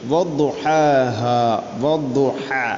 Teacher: ഹ തൊണ്ടയുടെ മധ്യഭാഗമാണ് അതിൻ്റെ മഖ്റജ്.